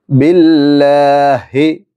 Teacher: ഹ എന്ന് പറയുന്ന തൊണ്ടയുടെ താഴ്ഭാഗത്ത് നിന്നാണ് ഉച്ചരിക്കേണ്ടത്